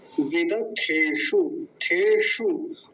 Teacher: कई बार तो बहुत सारे लोगों को मैंने उच्चारण करते देखा, थ का ध बना देते हैं, ध, वेदाध्येषु, ऐसा, वो गलत है।